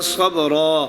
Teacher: وقف کریں گے تو ابدال کی صورت میں ہوگا، 2 زبر کو الف سے بدل دیا جائے گا، 2 زیر اور 2 پیش کی صورت میں ساکن کر دیا جائے گا.